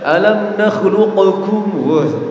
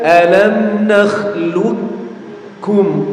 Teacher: Qafnya hilang. Jadi qol-qolahnya hilang. · Kalau ada qaf bertemu dengan huruf kaf, maka huruf qafnya masuk ke huruf kaf.